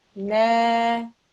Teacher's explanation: But this blank alif, because there's a fatha, this is an alif madda. So this is read for 2 seconds.